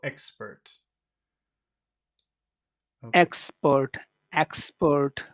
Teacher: we'll finish with a very low just keep it flat and low